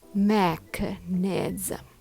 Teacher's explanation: Make sure the first syllable is strong and the rest flow smoothly.